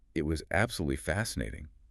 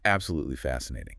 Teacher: The pitch goes up, the word is slightly elongated, and it conveys genuine excitement.